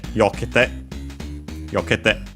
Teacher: the accent of the te form is on the third to last syllable, it moves, and so it's on the yo instead of the ke